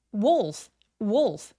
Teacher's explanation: Wolf wolf 여기서의 울f는 울f가 아니라 w라고 오 소리가 날 수 있도록 입을 둥그럽게 말아 주세요